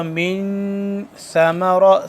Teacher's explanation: اخفا ہوگا، من ثمرہ، سا کو ہم نرمی سے پڑھیں گے، سا کو زبان کی نوک ذرا باہر کی جانب نکالیں گے دونوں دانتوں کے درمیان